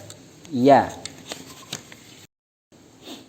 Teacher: Makharijul hurufnya bertempat pada tengah lidah rapat dengan langit-langit